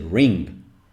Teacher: nasal sound and the way you do it is that well this is a nasal sound that you do by by sending your tongue to the back of your mouth right ring like fill it fill it in your mouth with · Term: velar nasal